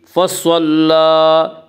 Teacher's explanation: صاد کو پر پڑھیں گے، صاد حروف مستعلیہ میں سے ہے۔ حروف مستعلیہ 7 ہیں جن کا مجموعہ خصہ ضغط نقض ہے جو ہمیشہ ہر حال میں پر پڑے جاتے ہیں۔